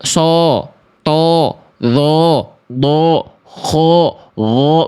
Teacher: mengangkat bagian pangkal lidah. Inilah faktor yang membuat huruf tebal menjadi tebal · vokal o itu bukan vokal o sebenarnya, tapi vokal a yang gemuk dia gendutnya gitu ya, berisi